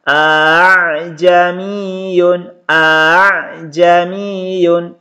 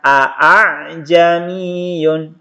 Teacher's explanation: Hamzah yang kedua dibaca samar atau dibaca ringan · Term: tashil